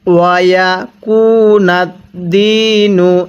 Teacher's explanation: দালিয়াজের দি, এক আলিফ টেনে পড়ব। যেখানেই দেখবেন জেরের পরে ইয়া সাকিন সেখানেই আপনি এক আলিফ টেনে পড়বেন